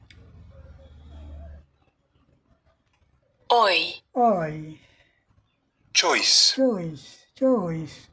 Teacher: यहां जो आप देख रहे हैं ओ आई ओ आई का उच्चारण यह है ओ आई चॉइस चॉइस चॉइस ठीक है आइए विस्तार से देखते हैं ओय ओय चॉइस चॉइस चॉइस ओय long sound look at the diagram listen and then से the sound sound it move from ओ टू ए